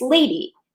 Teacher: So the way he's written it, he's expecting people to read lady as two unstressed syllables, but it's not, it's lady. So the stress naturally falls on the first syllable of the word lady.